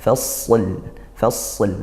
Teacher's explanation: fasl harus tetap disempurnakan lamnya, bukan fas hilang nanti lamnya